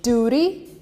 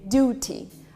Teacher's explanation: In duty, in America, we replace T with an R, duty. You almost say it with an R.